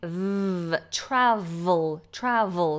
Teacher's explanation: so a V bottom lip top teeth